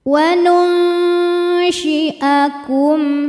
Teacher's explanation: Karena nun sukun bertemu dengan syin. Cara bacanya nun disamarkan ke syin disertai bunyi dengung. Dengung dan kesamarannya sama besar. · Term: ikhfa hakiki ausat, ikhfa hakiki